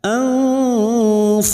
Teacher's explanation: Na anfusahum nun sukun bertemu fa ikfa hakiki. Kita samarkan bunyi nun sukun mendengung selama dua atau tiga harokat.